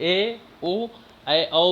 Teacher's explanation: ए ओ ए औ भी दीर्घ स्वर हैं क्योंकि इनके उच्चारण में 2 मात्राओं का समय लगता है। यह मूल स्वर अ यू के मेल से बने हैं, अतः इन्हें संयुक्त स्वर भी कहा जाता है, ठीक ना।